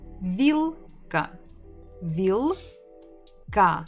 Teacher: Remember that this l is hard, not vil.